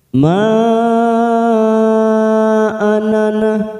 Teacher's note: Mad jaiz munfasil kita panjangkan 4 harokat atau 4 ketuk.